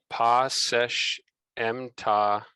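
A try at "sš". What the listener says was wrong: We'll do this one as secha or sechau, because it's got the u. Yeah, so a lot of Egyptian textbooks will render this as sesh, but that's based on an outdated reading of the sign. It's actually secha. It's a triliteral. And we know that from Coptic evidence.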